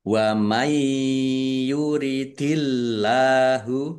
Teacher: Allahnya dibaca tipis karena harakat di depannya kasrah. Lam fathah berdiri mad thobi panjang dua harakat.